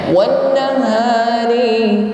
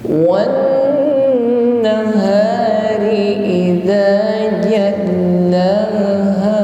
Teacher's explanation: Setiap nun dan mim yang bertasydid maka ditahan sampai berdengung. Ditahan sampai terasa dengung di rongga hidung atau al-khayshum. Wan terasa berdengung baru dilanjutkan.